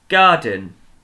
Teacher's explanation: the beginning is stressed isn't it the din is quite short at the end but the gar is the thing that we we say more